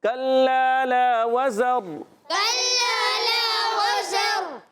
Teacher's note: واو کی ادائیگی ہونٹوں کی گولائی سے · ان کا مخرج زبان کی بالکل باریک نوک، اصلۃ اللسان، زبان کی بالکل باریک نوک، اور نیچے اور اوپر کے دانتوں کے اندرون کنارے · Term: سیٹی